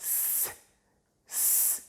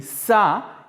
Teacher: so i've said voiceless alveolar fricative that means we're talking about a sound with no voice that is produced at the alveolar ridge